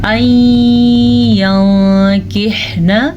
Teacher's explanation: نون ساکن کے بعد یمون میں سے یا آیا ہوا ہے تو ہم ان دونوں کو آپس میں ملا کے غنے کے ساتھ پڑھیں گے۔